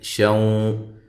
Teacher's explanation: یہ نون تنوین کا ادغام ہے، مع الغنہ ہے